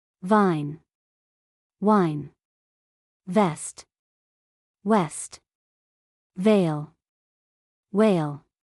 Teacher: If you place your hand on your throat while saying the V sound, you will feel vibration. But with the W sound, the air moves smoothly without friction.